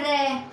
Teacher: रे होता है लुंठित व्यंजन या फिर प्रकंपित व्यंजन। इनके उच्चारण में जीभ कंपन करती है। जैसे कि हम बोल के देख लेते हैं रे, मतलब कि जीभ कांपती है, जीभ कंपन करती है, इसलिए इसे बोलते हैं लुंठित व्यंजन या फिर प्रकंपित व्यंजन।